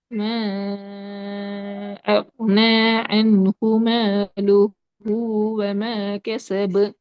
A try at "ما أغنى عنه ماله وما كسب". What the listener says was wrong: இன்னும் கொஞ்சம் நீட்டுங்க. أغنى.